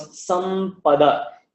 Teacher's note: the pure nasal sound, which was that Anuswara, takes on the form of the following letter Pa. So it becomes Sampada.